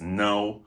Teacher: No is just nasalized.